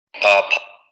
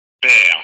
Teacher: igualito que en español, no tenemos ningún fenómeno de aspiración al principio. père, père, père, père.